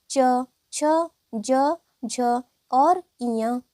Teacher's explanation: च वर्ग के सभी व्यंजन तालु व्यंजन कहलाते हैं